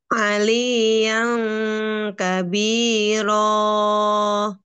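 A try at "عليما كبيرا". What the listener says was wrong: Kabiro, rohnya dibaca dua harokat saja. Ali yang kabiro. tanya, Bu di sini dengungnya tebal apa tipis, Bu? Tipis. Berarti ditipiskan, Bu. Diperjelas lagi tipisnya. Ali yang, yang, yang. Nah, itu kalau bisa itu suaranya kayak kita bilang eng.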